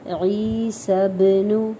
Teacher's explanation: یہاں پہ مد اصلی ہو رہی ہے، ایک الف کے برابر کھینچیں گے